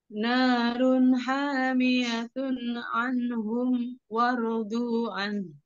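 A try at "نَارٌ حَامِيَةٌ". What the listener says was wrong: Nah, di sini diwakofin. Narun hamiyah. Nah, jangan dibaca semua. Walaupun dengan pola dibaca semua, narun hamiyah anhum waradu'an. Tetap diwakofkan.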